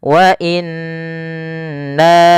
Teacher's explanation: Maka di sini nanya-nya dipanjangkan sepanjang empat harakat atau lima harakat. Wa inna setelah pertama menahan nunnya. Kemudian nanya dipanjangkan lagi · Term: mad jaiz munfasil